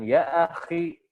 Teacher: Kho ketika dia kasroh dia sangat lemah, atau dia sukun sebelumnya kasroh, atau dia sukun sebelumnya lin, dia menjadi sangat lemah. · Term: tafkhim nisbi